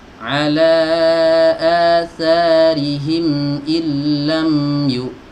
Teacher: mimnya di sini ya ada sukunnya, maka dia dialirkan sedikit saja suaranya